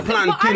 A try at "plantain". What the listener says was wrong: It's a plantain. Plantain. Nah, man, it doesn't even sound right when you're saying it. It's like you're saying plant, tin. Like tin is like plantain. A separate thing. That's plantain. What it sounds like you're saying.